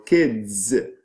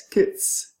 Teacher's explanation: Devoicing, it means there is a voiced sound, and then you change it, making it into a voiceless sound.